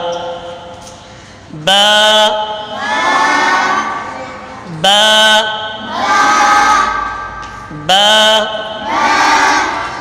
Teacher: دونوں ہونٹوں کے تری والے حصے سے ادا ہوتا ہے با